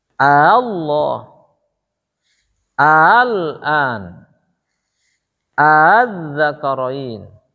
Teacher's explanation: Asalnya kan Allah, A yang kedua ngilang, kayak digeret gitu. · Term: tashil